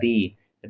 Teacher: तो री जो है रा प्लस इ से मिलकर बना है।